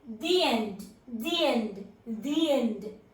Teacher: When we are pronouncing these two words, we should add a short Y sound in the middle